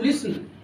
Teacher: লিসেন এর শেষকালের যে এন এটা হচ্ছে এরকম ব্যঞ্জন এগুলোকে ইংরেজিতে বলে ভোকালিক কনসোনেন্ট